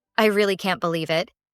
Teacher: you'll notice that really and believe are stressed